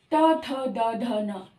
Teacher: चौथे नंबर पर दंत। दंत का है त थ द ध न